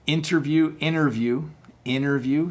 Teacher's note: see how I almost dropped the T